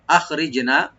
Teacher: রব্বানা আখরিজনা, আখরিজনা, হামজাকে রাইট দিবেন আর খাটাকে রাইট দিবেন, গলার শুরু থেকে আসবে। রি বলবো, আর জিমে একটু মাঝখানে একটু কলকলা করতে হবে, ইকু করতে হবে।